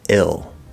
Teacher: we have the full L or light L plus an L-colored second vowel I